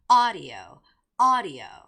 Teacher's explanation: you have to make that first syllable stress, which is audio